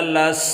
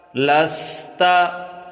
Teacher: سین کو سیٹی جیسی آواز نکالیں، سین کو سا نہ پڑھیں اور موٹا بھی نہ کریں سواد جیسا۔ لام سین زبر لس، تا زبر تا، لستا۔